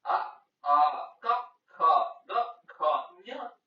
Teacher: ಇವು ಕಂಠದಲ್ಲಿ ಹುಟ್ಟುವುದರಿಂದ ಇವನ್ನು ಕಂಠ್ಯ ವರ್ಣಗಳೆನ್ನುವರು